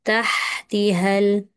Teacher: Dia tak ada qalqalah dekat taha tu.